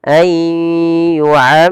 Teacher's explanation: Kemudian lafal ammar ada bacaan idgham bi gunnah, yaitu memasukkan nunnya kepada huruf ya dan ditahan.